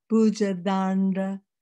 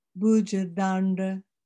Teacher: the D is on the teeth first, and then it moves back to the upper palate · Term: dental